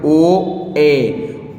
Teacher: अर्ध समृद्ध जिसको बोलने पर हमारा मुख थोड़ा बहुत खुले, आधा खुले, ओ ए, ओ और ए बोलने पर हमारा मुख जो है आधा खुल रहा है